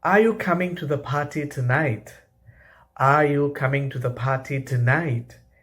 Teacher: In these questions, our voice rises at the end. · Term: rising intonation